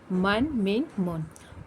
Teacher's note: میم کو ہمیں 3 الف کی مقدار لمبا کرنا ہے، زبر کی تنوین کے بعد الف نہیں پڑھنا ہے.